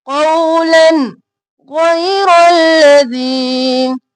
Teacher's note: ظلموا قولا، خوف موٹا، قو نہیں کرنا، قو، اور پھر لن، لن نہیں کرنا کیونکہ آگے غین آ گیا تو ہم اظہار کریں گے